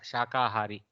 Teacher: When we say shakahari, there is no mahaprana, guys. Shakahari has a alpa prana kakara.